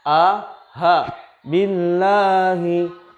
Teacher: A dengan ha tempat lahirnya atau makharijul hurufnya sama, yaitu di halqi, di tenggorokan yang paling dalam.